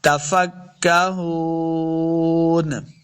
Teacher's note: فضلتم تفکہون اس کاف کو موٹا نہیں کریں گے. تفکہون ہا پیش واو ہو واو مد ہے، اس کو دو حرکات لمبا کریں گے، آخر پہ جب وقف کریں گے تو نون ساکن کرنا ہے.